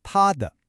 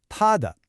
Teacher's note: Notice that smooth transition from the high flat tone to that light neutral tone.